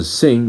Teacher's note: The last one is a nasal sound, and it is a velar sound. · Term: NG sound